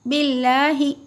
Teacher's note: अल्लाह के लाम से पहले अगर ज़ेर हो तो अल्लाह के लाम को बारीक पढ़िए